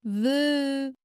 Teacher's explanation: Imaginez que vos dents du haut viennent effleurer votre lèvre inférieure. C'est cette légère friction qui produit le son. De plus, il est sonore, ce qui veut dire que vos cordes vocales vibrent lorsque vous le prononcez. · Le son V. Le son V est une consonne fricative labiodentale sonore.